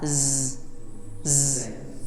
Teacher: Kalau sinnya itu bersih, kalau zainya itu bergetar, z. Jadi seperti gabungan s dengan z, ya, z.